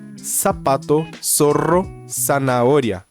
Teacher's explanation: não existe som de Z em espanhol. Então, o próprio Z tem som de S.